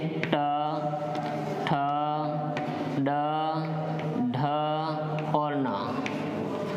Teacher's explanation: देखिए ऋतु रसाणाम मूर्धा, इनका उच्चारण स्थान जो होगा वो क्या हो जाएगा, मूर्धा हो जाएगा। ऋतु रसाणाम मूर्धा, अर्थात इनको हम क्या कहेंगे, मूर्धन्य वर्ण कहेंगे, मूर्धन्य वर्ण कहेंगे।